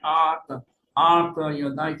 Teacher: We Ashkenazim, we don't pronounce the difference between an ayin and an aleph, but the ayin is really guttural. And they do pronounce it very distinctly from a Mediterranean background. The Jews of the Sephardic traditions, they pronounce that ayin Ata, Ata.